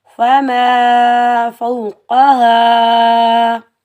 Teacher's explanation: بغیر کھینچے پڑھیں گے، حمزہ کو میم کے ساتھ ملائیں گے، میم کے اوپر تشدید ہے اور میم حروف یرملون میں سے آ رہا ہے تو یہاں ہم غنہ کریں گے